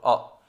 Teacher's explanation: हिंदी में अ स्वर केंद्रीय स्वर है, इसका उच्चारण में जीव का मध्य भाग थोड़ा सा ऊपर उठता है। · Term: मध्य स्वर